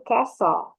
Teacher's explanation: tapi bacanya tuh T-nya itu hilang